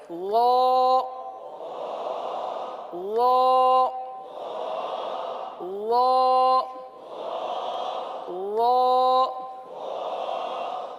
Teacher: لال کو آپ نے پر کر دیا، یعنی زبان کی جڑ والے حصے کو اٹھا لیا، تو تو وہ ذا کے بجائے وا بن گیا.